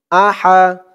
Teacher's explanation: হার উচ্চারণটা গলার ভিতর থেকে চিকন হয়ে আসবে